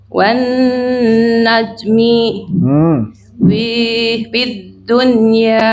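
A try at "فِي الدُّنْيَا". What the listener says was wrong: Fi-nya jangan panjang kalau gini Bu ya, langsung ke dal. Fid dunya.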